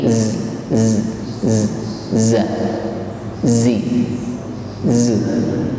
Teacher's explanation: ujung lidah bertemu gigi seri bawah dan suara sofirnya keluar di antara gigi atas dan bawah. Z. Dan bunyi desis ini suaranya tajam. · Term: sifat sofir